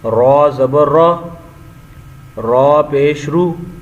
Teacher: را کے اوپر زبر ہے تو را کو ہم نے پر پڑھنا ہے. جیسے را زبر را نہیں پڑھنا، را، را زبر را.